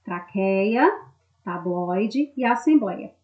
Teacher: A sílaba tônica está na penúltima sílaba, ou seja, elas são paroxítonas